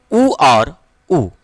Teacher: देखिए ओठ से उच्चारित होता है ऊ और ऊ